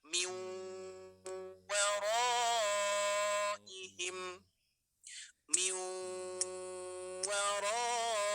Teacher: Nah, ingat cara membacanya diidghamkan ya. Kita anggap saja nun sukunnya tidak ada, maka langsung memasuki ke huruf wawunya.